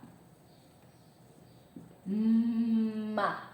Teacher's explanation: olha os lábios juntando. Bilabial.